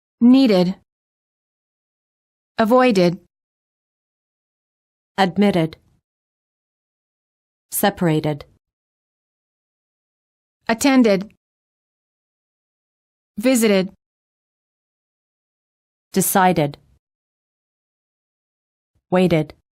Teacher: If the last letter of the word is spelled with a D or a T, the ED is pronounced as a separate syllable, id.